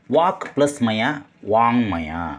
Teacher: ಈ ಕ ತನ್ನ ಸ್ಥಾನವನ್ನ ತನ್ನ ವರ್ಗದ ಅನುನಾಸಿಕಕ್ಕೆ ಬಿಟ್ಟು ಕೊಡ್ತದೆ ಹಾಗಾಗಿ ವಾಂಗ್ಮಯ ಅನ್ನೋದರಲ್ಲಿ ಬಂದಿದ್ದೊಂದು ಮ ಇದೆ ಅದು ಒಂದು ಅನುನಾಸಿಕ ಈ ಕನ್ನ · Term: ಅನುನಾಸಿಕ ಸಂಧಿ